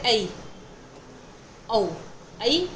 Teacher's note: इनमें एक स्वर से शुरू होकर दूसरे स्वर पर समाप्ति हो जाती है। जैसे अ से इ की ओर जाना।